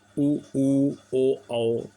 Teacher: इसमें ओठ गोलाकार हो जाते हैं। इनको वृत्त मुखी कहते हैं।